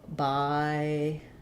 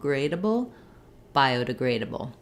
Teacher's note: biodegradable is going to be stressed on the grade syllable.